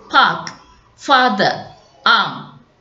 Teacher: Then the vowel with the lowest tongue elevation is A